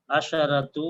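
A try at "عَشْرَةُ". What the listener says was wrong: عشرۃ، اس پہ خیال رکھیں گے کہ یہاں کوئی کسرہ نہیں ہے. عشرۃ اگر یہ ہے تو یہاں عشرۃ، اور اگر فیمیل ہے تو یہ ہوگا اشرو، شین پہ سکون.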